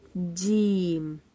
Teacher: جیم، جیم وسط زبان اور اوپر کا تالو اس سے ادا ہوتا ہے۔ وسط زبان، زبان کے بیچ والے حصے سے ادا ہوتا ہے اور اوپر کے تالو سے زبان لگتی ہے